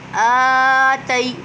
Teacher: حمزہ کھڑا زبر آ، تا یا زبر تی، آ تی۔ دیکھیں آ کو ہم کھینچیں گے کیونکہ آ پر کھڑی حرکات ہے۔ تی پہ یا سکن سے پہلے زبر ہے تو یا لین ہو رہا ہے۔